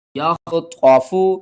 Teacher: خا کو آپ نے حلق کے سب سے اوپر والے حصے سے ادا کرنا ہے، خا حروف حلقی میں سے ہے، اور جب آپ نے خا کو پڑھنا ہے تو ہمارے حلق کے اوپر والے حصے سے تھوڑی سی آواز آئے گی۔